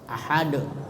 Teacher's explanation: Sugra tapi kalau di akhir kubra ya kalkala itu artinya goncangan pantulan suara dengan tiba-tiba sehingga suara membalik atau terdengar getar